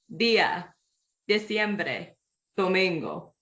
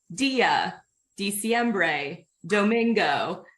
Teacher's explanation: But in Spanish, the D is pronounced more like a hard TH, if you want to think of it that way, like father, where your tongue is actually coming behind your teeth, both your upper and your lower teeth, rather than hitting the roof of your mouth.